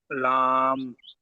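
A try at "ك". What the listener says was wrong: লাম নয় এটা, এটা কাফ, কাফ, এটা লাম নয়।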